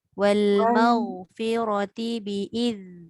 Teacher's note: Zal tu hujung lidah keluarkan.